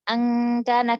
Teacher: pada ikhfa huruf kaf itu bukan siap-siap lagi, tapi udah menempel pangkal lidahnya pada langit-langit. Jadi kayak kita, angkana, kayak kita biasa.